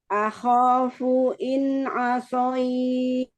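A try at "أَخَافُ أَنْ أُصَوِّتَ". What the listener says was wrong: Nah, jangan masuk hidung. Asoit, enggak. Akhafu in asoit. Asoit.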